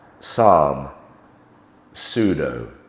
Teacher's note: P and S, likewise, psalm, pseudo. We just make the sound of S.